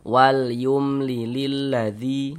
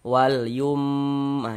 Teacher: Maka dibaca jelas, tidak berdengung, baca pendek saja. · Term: izhar syafawi